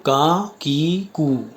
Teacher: یہ تینوں منہ کے خالی حصے سے ادا ہو رہے ہیں اور ان کی آواز منہ کے خالی حصے سے آتی ہے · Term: حروف مدہ